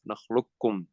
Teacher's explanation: when you pronounce it, you don't say the qaf, نخلقكم. So you go straight from the lam to the kaf.